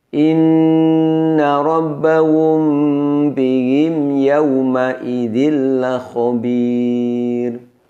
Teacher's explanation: Ada dengungnya, namun dengungnya sangat singkat dan sangat pendek. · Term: mim sukun